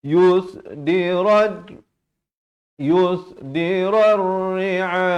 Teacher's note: Jadi kalau waqaf di sini pastikan hamzahnya itu diberikan tanda mati mendatang, dan di sini ra baris fathah terus naik di atas ra yang bersabdu. Jadi alif lam ini silent, tidak dibunyikan.